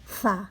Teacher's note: Sa, tergigit lidah kita oleh gigi atas.